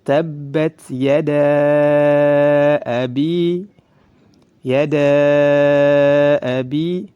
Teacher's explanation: Boleh dibaca dua harakat sampai 5 harakat. Boleh 2, boleh 3, boleh 4, sampai 5 harakat. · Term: mad jaiz munfasil